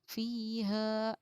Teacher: फ़ा या ज़र फ़ी, हा अलिफ ज़बर हा, फ़ी हा. या हुरूफ मद्दा है, इसलिए कि या साकिन से पहले ज़ेर है, इसको थोड़ा खींच कर पढ़ना चाहिए. हा अलिफ ज़बर हा, अलिफ हुरूफ मद्दा है, इसलिए कि अलिफ से पहले ज़बर है, इसको थोड़ा खींच कर पढ़ना चाहिए.